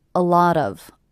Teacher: I hear these 3 words as one unit. A lot of, with the stress happening on the middle word.